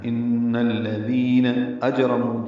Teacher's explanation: جیم ساکن ہے، اس پہ قلقلہ ہے، را پر ہے، اور نو واو مدہ ہے، 2 حرکات لمبا ہے.